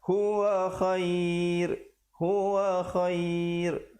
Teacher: Di situ ra-nya menjadi tipis